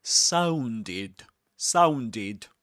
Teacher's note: The ed ending in the word sounded pronounced as id because the word sound ends with a d sound with a d consonants.